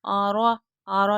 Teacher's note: را کو پور پڑھیں گے